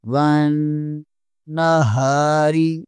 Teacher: واللیل اذا یغشی، آگے والی آیات واو زبر کو نون کے ساتھ ملانا ہے، یہاں پر نون مشدد ہے، یہاں پر غنہ لازمی ہوگا۔ ون، ہا زبر الف، ہا، ون نہا، رازری، ون نہاری۔